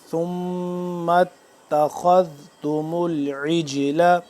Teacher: خا کو موٹا اور ذال کو نرمی سے